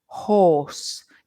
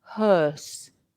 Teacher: And for horse, my lips are pointed, horse, and they're rounded. But hearse, they're a bit more square.